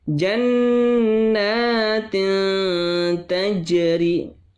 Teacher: Tanwin bertemu dengan ta. Maka tajwidnya adalah ikhfa. Cara membacanya adalah samar-samar. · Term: ikhfa hakiki